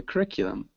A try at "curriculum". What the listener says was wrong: Yeah, curriculum.